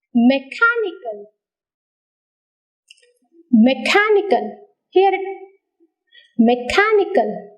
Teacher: car is heard much more louder higher longer than the other syllables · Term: stress